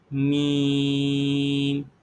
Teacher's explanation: میم کی آواز یہ ہمیں ناک میں سنائی دینی چاہیے، میم۔ آپ اس کو میرے ساتھ دہرائیں، میم۔